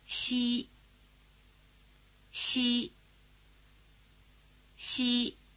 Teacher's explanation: The sound value of the letter I after a palatal such as X is the familiar vowel E. Remember that the palatal consonants are pronounced with the tongue in this same E position.